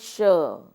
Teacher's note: तो उच्चारण भर से देखिए पता चल जाता है कि जब मैं उच्चारण तालु का प्रयोग करके करती हूं श तो इस श से आपको समझना चाहिए कि यह तालव्य श है